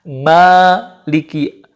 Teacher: Jadi kalau em-nya, mim-nya itu pasti ke hidung, tetapi ketika bunyi a itu gak boleh dari hidung. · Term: mad